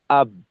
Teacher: আব দুই ঠোটে আটকাই গেলাম